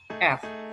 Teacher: Bunyi V ini bukan bunyi F. Kalau F itu berarti mempertemukan gigi dengan bibir bawah.